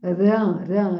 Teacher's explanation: É na língua. Ram, não é ram na garganta, é ram na ponta da língua